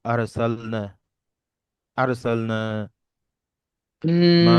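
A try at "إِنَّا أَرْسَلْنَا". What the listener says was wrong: ঠিক আছে, এখানে ইন্নাতে হচ্ছে গুণনা হবে আর কি, ইন্না আরসালনা। আর মা টান বেশি হবে না।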